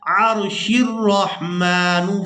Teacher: یہاں پر وقف کرنے کی صورت میں ہم نے اس لفظ کو پڑھنا ہے الرحمن، اور اگر ہم یہاں پر وقف نہیں کرتے تو پھر ہم نے اس حمزۃ الوصل کو گرا دینا ہے، شین کو را مشدد کے ساتھ ملانا ہے